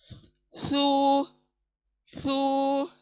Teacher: स 3 डॉट वाला हमारी जबान सामने के दांतों के सिरे पर लगेंगी। सू, सू, जबान बाहर को आएंगी, सू।